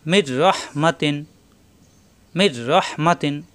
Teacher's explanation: এই রয়ে তাজদিদ ধরে মিলাতে হবে কিন্তু গুণ্য হবে না। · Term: ঈদগামে বেলা গুণ্য